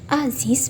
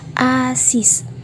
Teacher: Bila sebagai koda akan dilafalkan sebagai bunyi Z atau S. Misalnya pada kata aziz bisa dilafalkan menjadi asis.